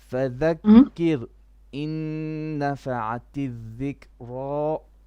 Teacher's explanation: make your ra a bit more flat, a bit more light, a bit more soft.